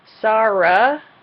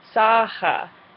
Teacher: whenever you see an r in German think about it as an H sound